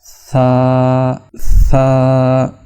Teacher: سا کی آواز زبان کے اگلے کنارے کو اوپر کے دانتوں کا جو نچلا حصہ ہے اس سے ہم جب ٹچ کریں گے، مس کریں گے تو تب سا اچھی طرح سے ادا ہوگا۔ بعض لوگ سا کو اور سین کو آپس میں مکس کر لیتے ہیں، جو کہ بہت بڑی غلطی ہے۔